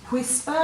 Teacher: if you say whisper you'll feel air after the w